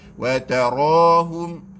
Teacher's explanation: Jadi ra itu ra taqlil. Kita nak ra tebal sebab ra berbaris fathah.